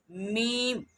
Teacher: جیسے لام، لام ایسے۔ اور اس کے بعد آتا ہے میم، میم دونوں ہونٹوں کو ملانے سے ادا ہوگا ، میم دونوں ہونٹوں کو جب ملائیں گے خشک والے حصے